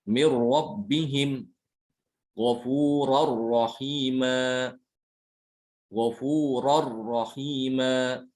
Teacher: Jadi kesannya itu nun atau tanwinnya itu sama sekali hilang ya. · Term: idgham kamil